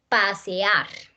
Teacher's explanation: estas dos señoras vocales que son independientes y lo que hace es que abren aquí se abren en dos sílabas